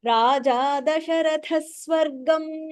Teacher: when Visarga is there and the next aksharam is Sakara, you have to add a Sakara is in between.